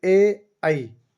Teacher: इनका कंठ और तालु से उच्चारण होता है, तो इनको बोलेंगे अपन कंठ तालव्य है।